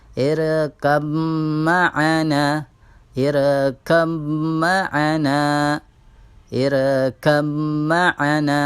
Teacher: ba di sini dimasukkan kepada huruf mim, dan seolah-olah huruf mim bertasydid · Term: idgham mutaqaribain